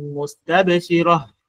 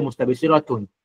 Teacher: umeikuta mwisho, yenyewe usimamaji wake imebadilika kuwa ha sakina. Dhahikatun mustabshira, sio mustabshiratun.